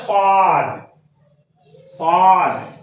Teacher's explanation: زبان اوپر کو اٹھے گا، تالو سے ملے گا، صاد کی ادائیگی ہوگی